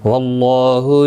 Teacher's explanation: اللہ کا لام زبر کی وجہ سے پر پڑا جائے گا، اس کے اوپر کھڑی زبر بھی ہے، ایک الف کی مقدار کے برابر کھینچ کر پڑھیں گے۔